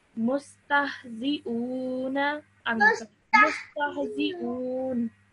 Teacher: So that's why when you're pausing, this fatha becomes a sukoon.